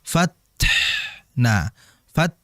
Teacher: Jadi desisan ta sama ha tetap dialirkan